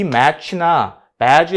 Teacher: 스탑 사운드하고 그 다음에 프리커티브 사운드가 결합되어 있는 거란 말이죠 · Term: 애프리킷